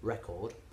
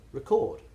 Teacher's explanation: the noun has the stress on the first syllable, record, and the verb has the stress on the second syllable